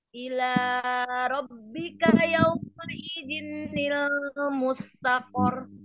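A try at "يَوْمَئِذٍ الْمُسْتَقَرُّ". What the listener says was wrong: Idzinil enggak ada tasdidnya di sana.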